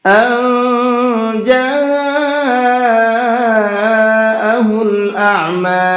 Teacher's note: نون ساکن کے بعد میں اگر اخفا کے حرفوں میں سے کوئی بھی حرف آ جاتا ہے تو وہاں نون کے اندر تھوڑا سا اخفا کر کے پڑھتے ہیں، آواز کو چھپا کر کے پڑھتے ہیں۔ جاءہ، یہاں یہ بڑا مد بنا ہوا ہے، اس کو 4 سے 5 الف کے برابر کھینچ کر کے پڑھیں گے۔